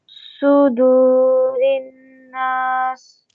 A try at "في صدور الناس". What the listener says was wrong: في صدور الناس. Su. Su. Su. Su. في صدور. Su. Round your lips. After fi, round your lips. في صدور الناس. not sa. Make oo sound. Oo. في su. Su.